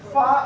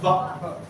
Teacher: fa is voiceless and va is voiced